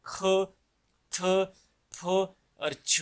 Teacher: आवाज को सांस के साथ थोड़ी सी आवाज मुंह से और थोड़ी सी सांस निकाल के इनको अदा करते हैं, थोड़ा बारी रख के इनको अदा करते हैं। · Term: एस्पिरेशन आवाज